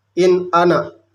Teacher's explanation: Cara membaca nun mati atau tanwin yang demikian itu harus terang, jelas, dan pendek. Bunyi suaranya tetap jelas, tidak samar dan tidak mendengung. Sebagai misal, nun mati ini bertemu hamzah, ini in ana dibacanya langsung. · Izhar holki ialah bila nun mati atau tanwin bertemu dengan sesuatu huruf izhar dibaca jelas, berbunyi suara n-nya, maka disebut izhar holki karena huruf-hurufnya keluar dari arah tenggorokan atau khalq. Cara membaca nun mati atau tanwin yang demikian itu harus terang, jelas, dan pendek. Bunyi suaranya tetap jelas, tidak samar dan tidak mendengung.